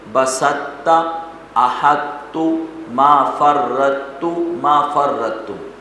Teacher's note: پہلے طا کو موٹا پڑھیں پھر تا کو باریک پڑھیں، تو اس کو ادغام ناقص کہتے ہیں، اس کو ادغام ناقص کہتے ہیں۔